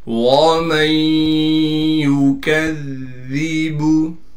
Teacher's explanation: وَمَن يُكَذِّبُ، میم کو ہم ڈائریکٹ یا سے ملا دیں گے، ادغام کے قاعدے سے اس نون کو ہم ختم کر دیں گے۔ میم کو یا سے ملائیں گے غنہ کے ساتھ، اس لیے کہ نون ساکن کے بعد حروف یرملون میں سے یا آ گئی